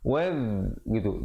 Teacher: Terus waw pada atas naik di atas zal. Zal ni makhrajnya hujung lidah keluar di antara 2 gigi menyentuh 2 gigi depan.